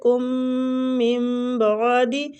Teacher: نون ساکنہ کو ہم میم کے ساتھ بدل کے پڑھیں گے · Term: اقلاب